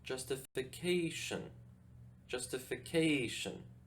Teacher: the stress goes on the fourth syllable